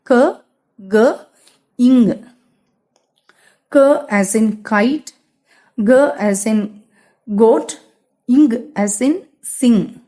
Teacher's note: the back part of the tongue against the soft palate, which is also known as the velum, which is the back part of the roof of the mouth.